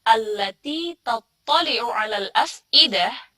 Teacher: biasanya di alal af'idah ini bacanya malah ain, yang harusnya dibacanya hamzah